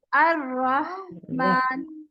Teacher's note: हा की आवाज में सिर्फ सांस है।